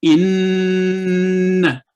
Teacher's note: nasal sound 2 second اور فتح کی آواز 1 سیکنڈ